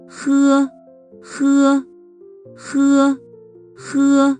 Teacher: With h, the back of the tongue is raised towards the soft palate.